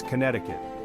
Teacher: That second C never has been pronounced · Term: C silent